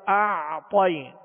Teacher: اور غنہ کر کے پھر اس کو کھینچیں گے، کھینچنے کے بعد اعطی، تو عین جو ہے اس پر جزم ہے، عین ساکن ہے، لہذا اس کا سکون کامل ادا کریں گے۔ اعطی، طا کو پر پڑھیں گے اس لیے کہ حروف مستعلیہ میں سے ہے